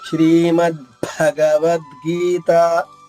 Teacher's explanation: ఇక్కడ భ అనేది మహాప్రాణము వస్తుంది.